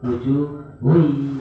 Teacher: karena diidghamkan non ke ya itu langsung seperti nunnya hilang. Mayyasha'u wujuhui, betul wujuhun ya, tapi langsung wujuhui.